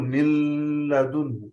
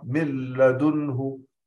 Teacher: إذا ننتبه إلى عدم الغنة إذا أدغمنا النون الساكنة أو التنوين في اللام